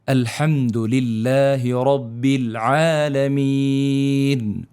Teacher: الحمد للہ کے اندر دیکھیں لام باریک پڑھ رہا ہوں میں، اس کو باریکی کے ساتھ ادا کیا جا رہا ہے. للہ نہیں پڑھا، للہ رب العالمین.